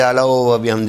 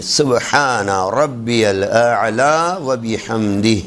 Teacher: اعلیٰ، حمزہ پہلے عین بعد میں. اعلیٰ و بحمد نہیں ہے، سبحان ربی اعلیٰ و بحمد نہیں ہے.